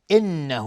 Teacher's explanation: نون مشدد 2 حرکت غنه میدیم، های ضمیر مد صله صغراست.